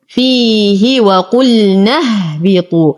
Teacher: انتقل من فتحة النون إلى إسكان الهاء. حرف المد يسقط أيضا بسبب التقاء الساكنين، ولو ابتدأت بهمزة الوصل أبتدأ بها مكسورة.